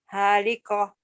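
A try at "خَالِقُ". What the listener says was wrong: Penyakit orang Padang ini. Haliko. Itu kan bunyi Jawa, orang Jawa. Bunyi O. Bukan haliko ya. Khaliko.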